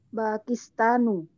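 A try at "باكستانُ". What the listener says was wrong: Aywa, Pakistanu. Nah, ahsanti. Taib, sahih.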